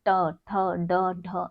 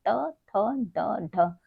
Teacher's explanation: और अगर हम व्यंजन की बात करें तो हमारा पूरा ट वर्ग ट वर्ग हमारा हमारे मूर्धा से उत्पन्न होती है इसकी ध्वनियां जैसे कि ट, ठ, ड, ढ। आप जब इस तरीके के उच्चारण करेंगे तो आपकी जीवा जो है वो मूर्धा को टच करती है